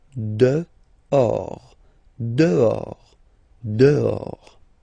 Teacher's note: this H in French doesn't exist phonetically, so you don't pronounce it